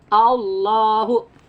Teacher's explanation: jika sebelumnya patah maka la-nya dibaca tafkhim, tebal ke o ya.